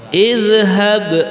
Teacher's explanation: ada ba yang berharokat sukun. Itu kalau dalam tajwidnya dibaca qalqalah